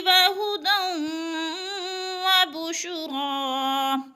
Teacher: وہدی دو زبر تنوین کے بعد واو مشدد ہے، دال کو واو کے ساتھ ملا کر ادغام کریں گے، یعنی مدغم کر دیں گے۔